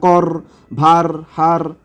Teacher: র একটি কম্পিত ব্যঞ্জন